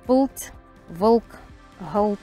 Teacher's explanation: Эти л и р всё-таки небольшой гласный призвук создают. И при произношении таких слов со слагообразующими гласными всё-таки небольшой гласный призвук есть. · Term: слагообразующие гласные л и р, слогообразующие гласные Л и Р